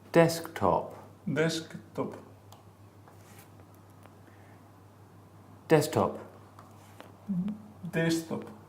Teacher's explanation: So there's no K here. You see what I mean? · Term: elision